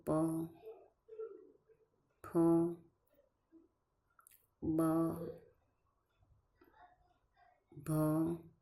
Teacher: બંને હોઠ ભેગા થઈને મુખમાંથી આવતી હવાને રોકે અને જે ધ્વનિ ઉત્પન્ન થાય તેને ઓષ્ટ ધ્વનિ કહે છે પછી